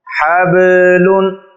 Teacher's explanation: با حروف قلقلہ میں سے ہے اور اس لیے با کو ظاہر کر کے پڑھا جا رہا ہے۔